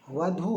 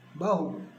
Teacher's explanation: नहीं करते हैं करते हैं समझना होगा सबसे पहले बहु तो है नहीं वधू है वधू वधू से हुआ बहु धकार का हकार हो गया